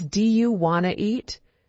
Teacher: Sometimes, sounds are dropped like the T in want to.